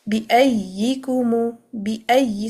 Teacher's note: the first ya is merged into the second one. It's a complete idgham.